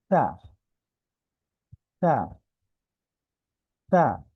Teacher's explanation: যখন আমরা এই দুইটা জিনিসকে অ্যাড করব, জিহ্বার আগাটা যখন দাঁতের সাথে লাগাবো, তখন অটোমেটিকলি নরম হয়ে যাবে।